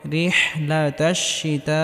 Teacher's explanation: বড় হাটি গলার মধ্যে হালকা চাপ দিয়ে উচ্চারণ করতে হবে। এখানে ছোট হা পড়লে হবে না।